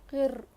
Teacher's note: اگر روئے مشددہ پر ساکن آ جائے تو ہم اسے دبا کر پڑھیں گے. رو کو موٹا نہیں پڑھیں گے کیونکہ روئے ساکنہ سے پہلے زیر ہے